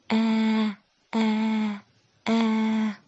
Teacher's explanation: Кончик языка прижимаем к нижним зубам. Спинку языка приподнимаем. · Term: Звук «э»